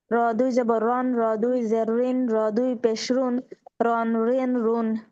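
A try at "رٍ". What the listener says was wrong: আপু যখন একসাথে উচ্চারণ করছেন তখন ঋণ উচ্চারণটা ঠিক আছে, কিন্তু যখন র দুই যে ঋণ বলছেন তখন হচ্ছে মোটা হয়ে গেছিল। তো র দুই যে ঋণ স্বাভাবিক হবে।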